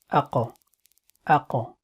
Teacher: Articulation point is it is one of the lisan throat tongue letters, and it is pronounced from the deepest part of the tongue, which is next to the throat, and what lies opposite to it of the mouth, that is opposite soft palate · We have the bouncing at the end, but that's one of its property. It's called Qalqala. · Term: Qaaf